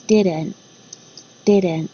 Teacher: you'll notice there's no t sound